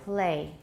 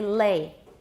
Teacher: It's become devoiced because it's influenced by the initial stop, p p, which is voiceless. Um when you say the whole word play, the l is typically voiceless and very different from the l in lay. Lay is clearly voiced.